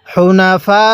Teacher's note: এই ফা এর মধ্যে আমরা চার আলিফ টান দিব